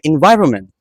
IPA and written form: ɪnˈvaɪ.rə.mənt (environment)